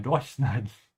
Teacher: because it's separable, we have to emphasize the prefix